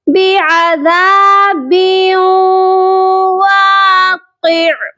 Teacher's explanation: جب بھی حروف یرملون کے 4 حروف یا میم نون واو، یہ 4 حروف میں سے کوئی بھی حرف تنوین کے بعد آئے گا تو ہم کریں گے ادغام ود غنہ، ادغام مع الغنہ، یعنی کہ ہم ادغام بھی کریں گے، ملائیں گے بھی، اور ہم غنہ بھی کریں گے۔